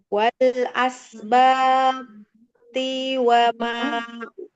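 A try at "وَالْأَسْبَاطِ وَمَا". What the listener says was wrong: To-nya jangan dipanjangkan. Wal asbati wa ma utiya Musa.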